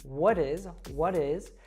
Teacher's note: we have the American T there happening because the T Falls between what and is so it becomes what is what is and then the s